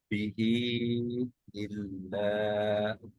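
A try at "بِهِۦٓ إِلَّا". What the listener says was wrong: বিহিতে আরেকটু লম্বা করি, 4 তো।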